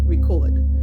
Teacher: If it's a verb, the accent or stress is on the second syllable.